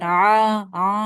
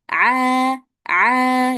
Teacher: pas baca ain itu dia enggak bindeng di hidungnya. Jadi bukan a a gitu salah.